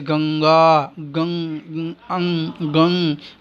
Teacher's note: जैसे गंगा, गंग, अंग, गंग, ग के ऊपर जो अनुस्वार है उसका उच्चारण स्थान नासिका कहलाएगा।